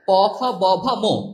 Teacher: দুটি ঠোঁটের স্পর্শে, এই যে ঠোঁটের স্পর্শে যে বর্ণগুলো উচ্চারিত হয় সেগুলোকে কি বলা হয়, ওষ্ঠ বর্ণ